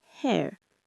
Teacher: It's a glide from e towards that neutral schwa sound.